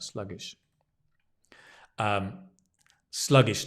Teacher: sluggish stress on the slug